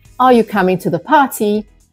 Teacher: the upward inflection indicates that the speaker is seeking for an answer this rise in internation enhances communication and ensures that the listener · typically The Voice Rises at the end of the question